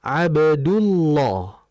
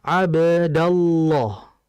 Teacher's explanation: Kalau harokatnya dhammah atau fathah, maka Allahnya, lamnya menjadi tebal. Tapi kalau tandanya kasrah, maka lafzul jalalah pada lamnya menjadi tipis.